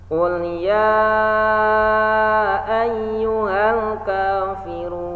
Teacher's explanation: ya 4 harokat bertemu hamzah